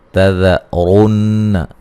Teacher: مدہ ہے، لو و مدہ ہے، لا الف مدہ ہے، تذرن، ذال کو نرم ادا کریں گے، باریک پڑھیں گے، اور را کو موٹا ادا کریں گے